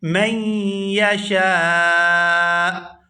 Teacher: وقف کی صورت میں حمزہ جو ہے یہ ساکن ہو جائے گا اور شین کو کھینچتے ہوئے حمزہ ساکن کے ساتھ ملائیں گے